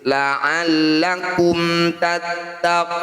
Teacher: Cara bacanya tidak usah dibaca dengung ya. Mim sukun dibaca jelas, rapatkan bibir. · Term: izhar syafawi